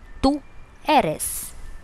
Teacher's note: The stress on you is very important.